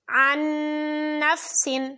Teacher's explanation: اس میں نون ساکن کے بعد نون ہے تو ادغام بالغنہ